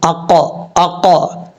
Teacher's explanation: یہ جو ق کی آواز آ رہی نا، یہ قلقلہ ہے، اس کو قلقلہ بولتے ہیں، آواز لوٹ رہی ہے۔ جس حرف میں آواز لوٹے وہ حروف قلقلہ ہوتا ہے، اگر غلط طریقے سے لوٹائیں گے وہ ایک الگ بات ہے، یعنی حروف قلقلہ 5 ہے، 5 حروف میں آواز لوٹے گی جب ساکن ہوں گے۔